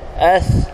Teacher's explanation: Sa di hujung lidah, as.